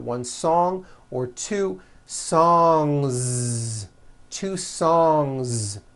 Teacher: song ends with a voiced ng sound so if you make it plural don't forget to add a voiced Z ending